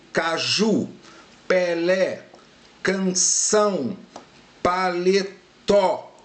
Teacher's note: A sílaba tônica é sempre a última sílaba. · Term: palavras oxítonas